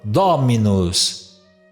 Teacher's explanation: Como não pode cair o acento na última sílaba, porque o latim não tem oxítona, então o acento recairia na penúltima, no caso do mi. Porém, mi não é uma sílaba longa, é uma sílaba breve, e aí automaticamente o acento vai para a antepenúltima sílaba